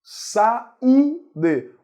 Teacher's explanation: O U é mais forte, forma hiato com a vogal anterior.